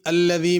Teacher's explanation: الذی میں ذال ہے، اس کو ذا نہیں پڑھنا۔